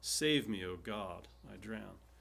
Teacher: Stress on the first and fourth.